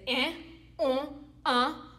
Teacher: Those are considered nasal vowels for Haitians.